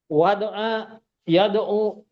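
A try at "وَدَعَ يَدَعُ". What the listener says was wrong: Wadu'a yada'u di fathah. Di fathah ain fi'ilnya. Ain fi'il Nah, di fathah pada mudhari'nya tuh. Da. Bukan yadi'u kan? Da'u.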